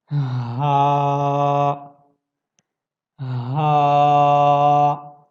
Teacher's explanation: ہا بھی آپ کے تھروٹل لیٹرز میں سے ہے. ہاں آپ کے گلے کے بالکل جو نیچے کا حصہ ہے وہاں سے آپ اس کو ادا کرتے ہیں